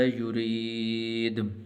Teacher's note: را کے نیچے زیر ہے تو اس کو باریک کر کے پڑھنا